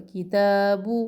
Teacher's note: بو ہونٹوں کی گولائی سے پیش ادا ہوتا ہے، مجہول نہ پڑے، بو نہ پڑے.